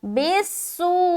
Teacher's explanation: سین زیر بیس سیٹی کی آواز ظاہر بالسوء. مد کی وجہ سے ہم نے اتنا کھینچا.